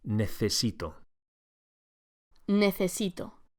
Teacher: be sure to pronounce the C as an English TH